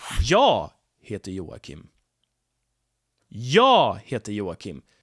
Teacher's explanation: I stress jag here because that's the most important information to convey here, that I am Joakim.